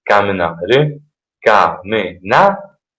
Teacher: un solo accento sulla sillaba na